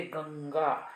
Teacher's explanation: अतः गंगा इति शब्दे अनुस्वारस्य स्थाने वर्गीयस्य अनुनासिकस्य उच्चारणं भवति। इसीलिए गंगा शब्द में अनुस्वार के स्थान पर उस वर्ग का, जिस वर्ग को ग बिलोंग कर रहा है, ग क वर्ग का है, तो क वर्ग का अनुनासिक का उच्चारण वहाँ पर होता है। जैसे गंगा, तो गंगा में अंग का जो क ख ग घ अंग, अंग का उच्चारण होता है गंगा, जो बोर्ड लेटर्स में लिखा है गंगा।